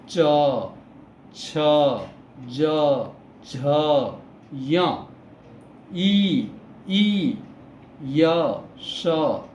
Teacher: जीभ के अंतिम भाग जो है वो तालु से टकराता है और हमारा उच्चारण निकलता है, इसलिए इसे तालव्य वर्ण कहते हैं।